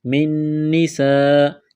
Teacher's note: نون ساکن کے بعد اگلی نون مشدد ہے تو نون کا نون میں ادغام کریں گے، غنہ کریں گے